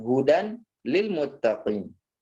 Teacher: Nah, jadi dia tanwinnya lenyap atau masuk langsung ke huruf lam.